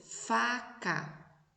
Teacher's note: Estão vendo? O F, quando eu vou falar o F, a consoante F, ela não tem uma vibração nas cordas vocais